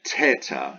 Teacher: tau is pure t no aspirate so that would be teta if it has an aspirate tau